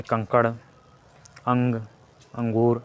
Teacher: स्वर के बाद आने वाला व्यंजन है जिसकी ध्वनि नाक से निकलती है